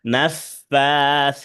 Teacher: নাফাতে খাড়া জবর আছে, সাতে খাড়া জবর আছে, দুইটাই টান হবে।